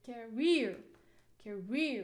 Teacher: Okay, here you can see the first syllable is contains, or the peak here is schwa sound. You cannot stress weak syllable, so we have to put the stress on the second syllable.